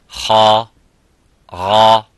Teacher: The Ghain and the Kha are full mouth.